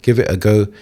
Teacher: You can hear some blended words in the middle. There's a glottal stop. I'm not pronouncing every T. I'm not saying give it a go.